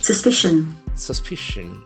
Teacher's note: The accent falls in the second syllable.